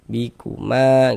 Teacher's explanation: Mad tabi'i panjangnya 2 harokat.